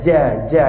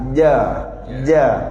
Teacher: lidah ni kena langit-langit atas akan ada angin contoh ja sebab makhraj huruf Jim tak pakai hujung pakai Tengah lidah